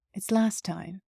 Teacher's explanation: It's not last time, it's last time. The T in the word last is lost.